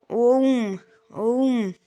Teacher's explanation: स्वर के या मूल स्वर के तीन गुना समय लगता है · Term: पलु स्वर